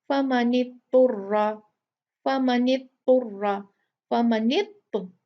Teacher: फमनित्तुर्रा, फमनित्तुर्रा, फमनित्त, ये इसको दौद को इग्नोर कर दिया और नून को फा से मिला दिया, ये गलत है।